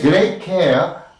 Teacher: Great care, the T is incomplete, right? Rather, there is no release of air. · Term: incomplete Plosion